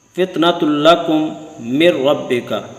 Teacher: ادغام بلا غنہ ہوگا، یعنی غنہ کے بغیر ہوگا، اس میں غنہ نہیں ہوگا